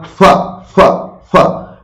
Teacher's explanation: se juntan, se aproximan los labios y el aire escapa. Es como cuando tú soplas, ¿no? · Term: fricativo bilabial